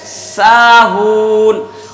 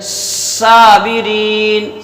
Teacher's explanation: تو سین میں بھی سیٹی کی آواز نکلے گی، صاد میں بھی سیٹی کی آواز نکلے گی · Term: صفت صفیر